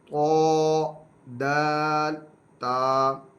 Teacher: زبان کی نوک اور اوپر کے دانتوں کی جڑ سے یہ ادا ہوتے ہیں، یہ تینوں ایک ہی جگہ سے حروف ادا ہوتے ہیں، زبان کی نوک اور اوپر کے دانتوں کی جڑ سے یہ ادا ہوں گے۔